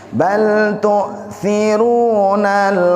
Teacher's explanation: Bal tu bukan tu biasa tapi ada hentakan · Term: hamzah